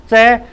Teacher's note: जीभ बिल्कुल ऊपर छटक जाती है ना, चिपक जाती है ऊपर के जो जबड़े पर ना। और इसका मतलब है कि हवा को पूरी तरह रोक रही है। जब हवा बाहर आने से रुकेगी तो कहाँ टकराएगी, तालु में टकराएगी। · तालु में हवा टकराती है, इसलिए हम च को च बोल पाते हैं